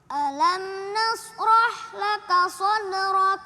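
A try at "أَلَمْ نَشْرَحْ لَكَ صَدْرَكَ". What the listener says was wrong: Pakai shin, syaraha lapang. Alam nasrah, dan alam nasrah atau alam nasrah shin. Alam nashrah laka sadrak wa wada'na 'anka wizrak.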